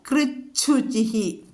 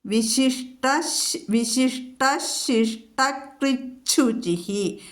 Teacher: തവർഗത്തിന് ശേഷം ഷ എന്നുള്ള അക്ഷരം വന്നാൽ ഈ ത എന്നുള്ളത് ചായായിട്ട് മാറും.